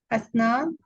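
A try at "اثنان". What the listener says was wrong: इस्नान इस्नान हमजा के नीचे जेड दे दें।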